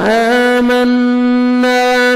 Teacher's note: قل هو الرحمن آمنا، حمزہ کو مر کھڑے زبر ہے، 1 سیکنڈ کھینچیں گے، نون مشدد غنہ کریں گے، نوز میں ساؤنڈ لے کے جائیں گے اور الف مدہ 1 سیکنڈ نون کو آپ نے کھینچنا ہے.